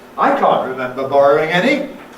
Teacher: Putting the nucleus on I for reasons of contrast. The contrast between what the other person remembers and what I remember, implying that we don't agree on what happened. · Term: fall-rise